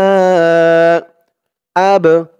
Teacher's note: কলকলার হরফ ধাক্কা দিয়ে পড়তে হবে